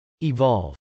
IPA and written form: ɪvˈɑlv (evolve)